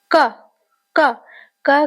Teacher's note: क क क कहते समय हमारा जीवा तालू में स्पर्श करता है और एक वायु कुछ क्षण के लिए झटक मने रुक जाता है और क कहने से झटके से बाहर आता है इसीलिए इसको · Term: स्पर्श व्यंजन